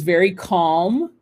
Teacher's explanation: you do not pronounce the l in english but you do in french